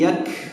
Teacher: Kaf itu termasuk huruf hamas gitu. Berarti kalau sampai yaksibun, membaca yaksibun ada hembusan nafas yang keluar ya. Jangan yaksibun, tapi yak ya, ada hembusan nafas yang keluar.